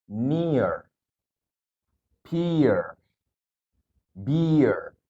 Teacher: kalau ada suara I ketemu vokal secara otomatis bakalan timbul suara Y di tengahnya untuk menyambungkan suara tersebut